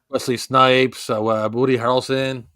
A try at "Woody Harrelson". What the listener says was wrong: Did you say Booty Harrelson? Did you say Booty Harrelson? Woody Harrelson. It sounded like you said Booty Harrelson.